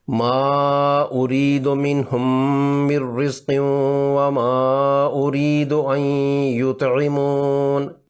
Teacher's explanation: میم کی آواز کو ناک کے بانسے سے 2 حرکات لمبا کر کے ادا کرتے ہیں۔ اس دوران زبان ساکت رہتی ہے اور ہونٹ بند رہتے ہیں۔ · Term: غنہ